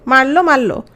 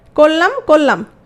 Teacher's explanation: রটা চলে গেল, লটা দ্বিত্ব হয়ে গেল। করলাম করলাম, র চলে গেল, লটা দ্বিত্ব হয়ে গেল। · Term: রকার লোপ